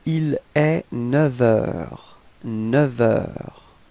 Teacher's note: And so with the liaison, so you can see that the liaison is coming between 9 and heure, and actually it's quite tricky in this case because we will change the sound, so we won't pronounce the F, but it would sound a bit more like V, like a V. Okay, so if you make the liaison, it would sound like il est 9 heures.